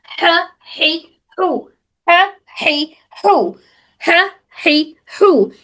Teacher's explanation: دوسرا ہم نے کیا سیکھا تھا، ہمارے حلق کے درمیانی حصے سے ہا ادا ہو رہا ہے، ہا، ہا کا صحیح کر رہا، ہمارے حلق کے بالکل درمیانی حصے سے ادا ہوتا، ہا، ہی، ہو، ہا، ہی، ہو، ہا، ہی، ہو، یہ بھی ہمارے حلق کے درمیانی حصے سے ادا ہو رہا۔